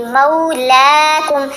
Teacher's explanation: اب منہ نہیں پڑھنا اس کو, واو کی وجہ سے بہت سے لوگ کنفیوز ہوتے ہیں تو اس کو پیش کی طرح پڑھتے ہیں. پیش کی آواز نہیں ہوتی ہے جو زبر کے ساتھ واو ساکن ہو. لین حروف کی آوازیں بہت ڈفرینٹ آوازیں ہوتی ہیں زبر زیر پیش سے. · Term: لین حرف